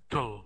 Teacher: the last syllable, we don't have any vowel sound. It's just tul. Without a, without a.